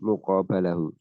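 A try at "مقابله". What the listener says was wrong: Kan tadi muqabil, kok muqabal? Jadinya muqabiluhu.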